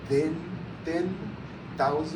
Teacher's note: mouth or at the front of the mouth behind the teeth the tip of the tongue is still at the front of the mouth behind the teeth · there is no vocal cord vibration and so the tongue is still at the tip of the